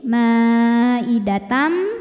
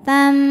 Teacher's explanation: ada hukum idgham bi gunnah karena ada tanwin fathah menghadapi huruf mim. Maka bunyi tanwin lebur ke mim, ma'idatam, sambil berdengung, tam, tahan.